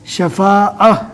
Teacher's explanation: ہم نے اس سے پہلے وقفہ کے گرامر میں بتا دیا ہے کہ گولتا جہاں پر بھی ہو اور وہاں پر ہمیں رکنا ہو تو رکنے کی حالت میں گولتا جزم والی ہا بن جائے گی، لہٰذا یہاں پر گولتا ہے، رکنے کی حالت میں ہمیں جزم والی ہا بنا کر پڑھنا ہے